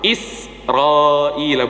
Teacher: Ada dua kalimat juga yang biasanya sering, ya, yang biasanya sering jamaah kalau membaca itu, saya kan selalu bilang jamaah rahimakumullah, tolong huruf za jangan dipantulkan. Begitu juga huruf sin jangan dipantulkan.